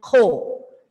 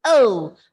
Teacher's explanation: the H sound might not be heard.